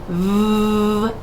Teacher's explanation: does your voice box vibrate yes that is a voiced sound